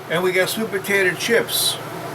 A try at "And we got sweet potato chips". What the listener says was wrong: Say it like don't say it like you're short on patience. Say, oh, and we got sweet potato chips.